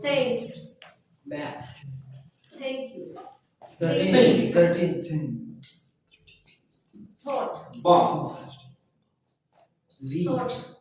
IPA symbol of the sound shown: θ